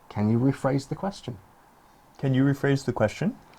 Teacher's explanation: the intonation going up at the end and it's not because we're Australians it's because it's a question